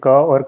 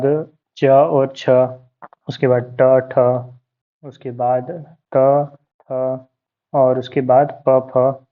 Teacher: ये सारे के सारे अघोष हैं, मतलब इन्हें बोलने में कंपन नहीं होता।